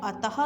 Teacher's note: में विसर्ग है पर जब हम इसे बोलते हैं अतः तो इसके अंत में हक की आवाज आती है